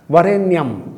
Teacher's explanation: अगर वह बोलना है तो वकार से दंतोष्ठम, वकार तब बोला जाएगा, तब शुद्ध बोला जाएगा जब दांत होठ पर, नीचे वाले होठ पर लगेंगे